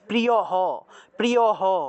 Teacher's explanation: লাইনের একদম শেষে বিসর্গ আছে সেজন্য এই হ টা পূর্ণরূপে উচ্চারণ হবে